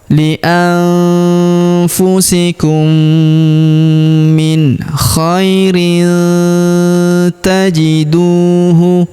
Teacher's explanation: Min khairin, tanwin in huruf rin yang ini ya tandanya bertemu dengan huruf ta, maka tanwin innya melebur masuk ke huruf ta. Kita baca dengung dan samar